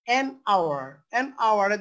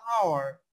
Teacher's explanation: an hour দেখেন উচ্চারণটা কিন্তু ও থেকে আসতেছে, আমরা কিন্তু এইচ এর উচ্চারণ করতেছি না। যদি এইচ এর উচ্চারণ হতো তাহলে কিন্তু হয়ে যেত হাওয়ার।